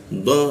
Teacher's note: D ada hembusannya dia ada hentakannya. Huruf D itu ada hentakan dia d.